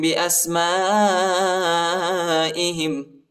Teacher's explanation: حمزہ کو سین کے ساتھ ملائیں گے اور الف پر جو ہے بڑا مد آئے، اس کو تقریباً 3-4 سیکنڈ تک کھینچنا ہے. اور یہ جو ہے یہ حمزہ ہے، ٹھیک ہے، اس کو زیادہ نہیں کھینچنا ہے.